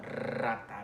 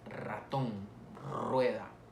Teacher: se ve interrumpido el paso del aire a través de una vibración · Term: vibrante múltiple